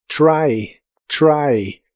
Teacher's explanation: suena como una ligera che cuando le sigue una R, como en este caso, try, try. · Para pronunciar el sonido de la letra T en inglés, empiezas con la lengua desde más arriba en el paladar que en español. Por eso suena como una ligera che cuando le sigue una R